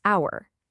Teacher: But the H is silent. The sound is hour. That's a vowel sound